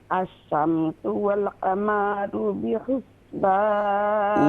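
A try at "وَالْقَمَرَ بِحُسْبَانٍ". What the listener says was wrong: वल क़मरु बिहुस्बान। क़ाफ और मीम दोनों पर फतहा की अलामत है, इसे खींचेंगे नहीं।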